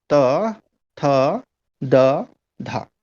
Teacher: आपकी जीभ का जो अग्र भाग है, यानी अगला भाग है, वो दांतों के पीछे टकरा रहा है।